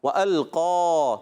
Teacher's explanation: قاف حروف مستعلیہ میں سے موٹے حروف میں سے موٹا بھی کرنا ہے، اور اس کا الف بھی موٹا رہے گا، وَأَلْقَا، کیا پڑھیں گے؟